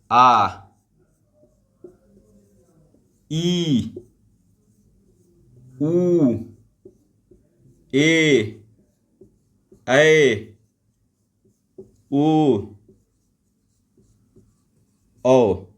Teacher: ऐसे स्वर जिनके उच्चारण में हस्व स्वर की तुलना में दो गुना समय लगता है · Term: दीर्घ स्वर